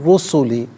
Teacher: من رسولی غلط، من رسولی، را کی آواز ہوگی، نون ساکن کا ساؤنڈ نہیں ہوگا۔ را پر پیش ہے، را کو پر کر کے پڑھیں گے، مشدد ہے، جماؤ کے ساتھ پڑھیں گے۔